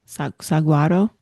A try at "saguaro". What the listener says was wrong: Saguaro. Saguaro. Saguaro. No, there's no G. Saguaro.